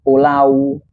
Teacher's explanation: Walaupun dalam penulisannya itu pulau, tapi dalam pengucapannya itu kita tidak mengucapnya itu pulau, tapi menggunakan fonem W yaitu pulau. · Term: fonem diftong